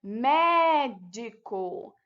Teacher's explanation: A sílaba que possui mais intensidade é a sílaba mé, que é a antepenúltima.